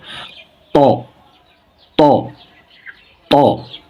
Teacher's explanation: উচ্চারণী স্থান জিহ্বার মাথা উপরে দাঁতে গোড়ার সঙ্গে লাগিয়ে শক্ত হরফ মোটা হরফ ত ত ত এই তা ত একই রকম কিন্তু আপনার পার্থক্য · উচ্চারণের স্থান জিহ্বার মাথা সামনে উপরে দাঁতে মাথার সঙ্গে লাগিয়ে